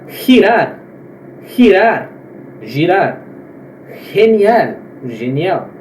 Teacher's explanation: Antes de E e I, galera, ela se pronuncia como se fosse o R dobrado aqui do português